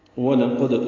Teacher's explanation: دال ساکن پہ قلقلہ کریں گے